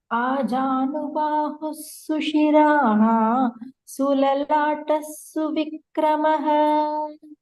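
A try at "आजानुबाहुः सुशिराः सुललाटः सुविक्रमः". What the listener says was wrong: Very good. Very good. Well repeated, Bhagini. Well tried.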